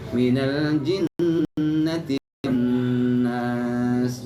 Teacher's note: jangan buru-buru kalau di nun bertasydid itu buru-buru dilepas, ya, ditahan dulu